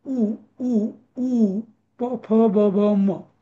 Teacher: ओष्ठवर्ण कुठले उ प फ ब म हे सगळे ओठांच्या उपयोगाने बोलले जातात